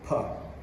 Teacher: it is completely unvoiced because you don't feel any vibrations and it's a stronger sound because you it sort of explodes